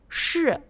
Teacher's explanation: le deuxième est un peu plus grave et vient du fond de la gorge